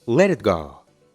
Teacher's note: aquí la t suena como una r porque está entre dos vocales la e de le y la i de e dilo junto